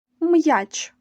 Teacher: він пишеться якомо тільки вгорі якщо після букви стоїть такий значок То наступна буква я читається як сполучення звуків й а М'який приголосний й та голосний а апостроф указує на твердість приголосних